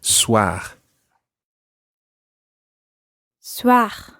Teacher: it's a guttural R at the end.